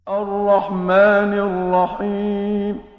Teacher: اب میم کو پھر انہوں نے لمبا کیا کیونکہ میم کے اوپر کھڑا زبر ہے